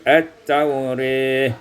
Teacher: dibaca imalah fathah ra dan alif maka menjadi at-taurih